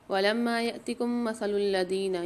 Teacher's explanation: یہاں میم ساکن کے بعد دوسری میم مشدد بھی آ رہی ہے يَأْتِكُمْ مَثَلُ میں، یہاں پر بھی غنہ کر کے پڑھیں گے